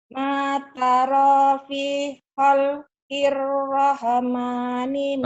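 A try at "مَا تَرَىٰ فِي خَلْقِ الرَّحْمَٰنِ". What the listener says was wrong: Rahe, rahe. Jangan rahe, rahma. Jangan ada e-nya ya. Udah bagus banget kalau nggak ada e-nya coba.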